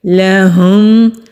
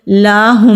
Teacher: اکثر لوگ پڑھتے ہوئے یہ غلطی کرتے ہیں کہ لام کو کھینچتے ہیں تو یہ حرام غلطی ہو جاتی ہے، میننگ بالکل الٹ ہو جاتا ہے۔ لام کو جلدی ادا کریں گے، لہم، لاہم نہیں کریں گے ورنہ حرام غلطی ہو جائے گی۔